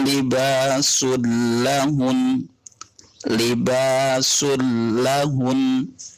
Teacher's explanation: nun mati atau tanwin yang bertemu dengan salah satu huruf idgham bilahunna, maka harus dibaca tanpa dengung, yaitu contohnya tanwin bertemu dengan lam.